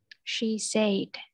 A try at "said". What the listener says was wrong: Không đọc thành A nữa, nó là âm E. Cái này từ này đặc biệt. Said. Đừng đọc, nếu đừng đọc thiên về E quá, nó sẽ bị dễ nhầm với chữ sad, là buồn. Cho nên cái âm này nó hơi nửa E, nửa E. Said.